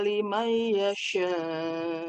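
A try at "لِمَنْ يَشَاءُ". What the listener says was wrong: Liman yasha. Kurang ditahan.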